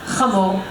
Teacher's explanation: ya no saben usar la parte gutural de la palabra, lo que en el idioma árabe sí se conserva